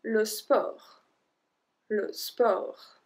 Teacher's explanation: We don't pronounce the T at the end.